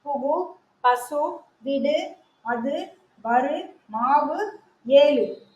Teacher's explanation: எப்போது முழுமையாக ஒலிக்கும் முழுமையாக ஒலிக்கும் வல்லினம் அல்லாத உகரங்கள் எப்போதும் முழுமையாகவே ஒலிக்கும் இவ்வாறு ஓசை குறையாமல் ஒரு மாத்திரை அளவில் முழுமையாக ஒலிப்பதை முற்றிய உகரம் சொல்றாங்க